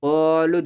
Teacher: یہاں دال پر قلقلہ کریں